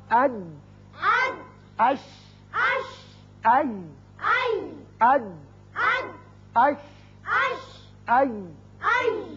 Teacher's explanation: زبان کا درمیانی حصہ جب سامنے والے تالو کے درمیانی حصے سے لگتا ہے چپکتا ہے تو یہ تینوں حروف ادا کیے جاتے ہیں